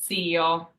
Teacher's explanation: say zio, and then add a slight T in front of it